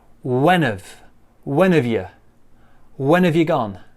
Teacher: you gone again we're gonna what we're gonna do first thing get rid of that h join the n and the a you becomes ye